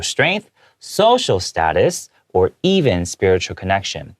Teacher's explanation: I made sure to take a pause and to uplift my intonation, my tone, so that way you can tell that it's different from show strength · 排比的时候 ，A 逗号 B 的时候语调往上。到最后结束 spiritual connection 的时候，语调往下，这就是一个比较符合英文在讲话发音的时候的一个抑扬顿挫。